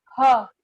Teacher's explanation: अघोष में नहीं आएगा ह, घोषवान में ह आएगा